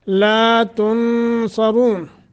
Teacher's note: لا تنصرون، لا تھوڑا سا لمبا کرنا ہے، تن نون ساکن کے بعد صاد حروف اخفا میں سے، تو اخفا کرنا ہے، صاد را دونوں کو موٹا کرنا ہے.